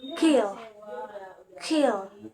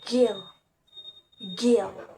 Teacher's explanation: K and G are distinguished by voicing, where K is voiceless and G is voiced. The sounds are produced at the velar place, with the tongue touching the back part of the roof of the mouth. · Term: plosive